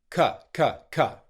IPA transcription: kə